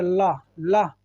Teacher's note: जब ला बोल रहे होते हैं तो आवाज़ जो है वो जीभ के किनारे को छू करके निकल रही है, इसीलिए इसको क्या बोलते हैं, पार्श्विक।